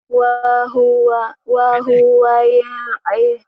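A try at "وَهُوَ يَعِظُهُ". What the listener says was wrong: pendek semua. Nggak ada yang panjang kecuali ujung. Pendek. Pendek. Tekan di sini. Wa huwa ya'izuhu.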